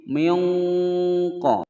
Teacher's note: Kama, ka pendek, ma panjang dua ketukan mad tabi'i, suila pendek semua, suila mu panjang dua ketukan ada wawu sukun sebelumnya dhammah, Musa panjang dua ketukan mulhaq mad tabi'i, minqa nun sukun bertemu dengan huruf qaf disamarkan dan didengungkan selama dua ketukan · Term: ikhfa ab'ad